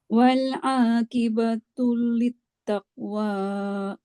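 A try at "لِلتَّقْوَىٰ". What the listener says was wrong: Qalqalahnya. Taqwa.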